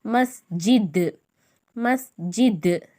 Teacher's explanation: தால் கல்கலாவின் எழுத்து. கல்கலா செஞ்சு இருமுறைகள் அசைச்சி அதட்டி ஓதுற மாதிரி இத்து இத்து அந்த சவுண்டோட ஓதணும்.